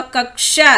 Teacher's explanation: कक्षा यानी आधा का और शा का ध्वनि सुनाई देता है और आ का ध्वनि सुनाई देता है।